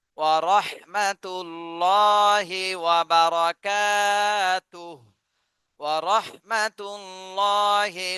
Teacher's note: র মোটা করে পড়তে হবে র এর উপরে জবর আছে